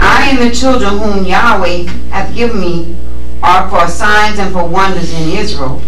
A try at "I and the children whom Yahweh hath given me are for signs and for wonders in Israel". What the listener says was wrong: See, slow that down. Read it again, but slow it down.